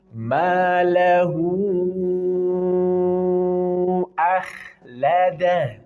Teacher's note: Di sini ada masilah tawilah. Ada hak dhamir bertemu dengan hamzah setelahnya. Maka baca 4 sampai 5 harokat.